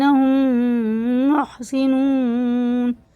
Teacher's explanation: میم ساکن کے بعد میم ہے تو یہ ادغام شفی ہے، غنہ کر کے پڑھیں گے